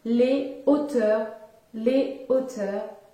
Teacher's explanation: au pluriel, il n'y a pas de liaison et il faut dire les hauteurs